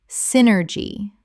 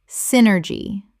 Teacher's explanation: Synergy. Three syllables with the stress on the first and the Y making an I sound.